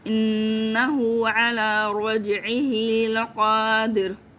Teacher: رج میں جیم قلقلہ کرنا ہے، را کو موٹا بھی بولنا ہے. لقادر میں اب دیر نہیں کہا، در، ٹھیک ہے.